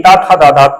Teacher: दंत में त था दादा त वर्ग के वर्ण आते